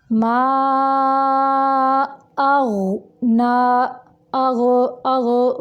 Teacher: माँ की अदायगी के वक़्त जो माँ है ये नाक की तरफ नहीं निकालेंगे। माँ की आवाज़ को मुंह से निकालेंगे।